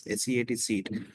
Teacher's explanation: high front unrounded vowel as in seat